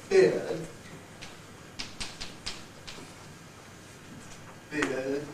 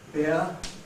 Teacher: might drink beer where it's a little bit open beer so I'm talking about the difference between this closer end point of beard and this opener end point of beer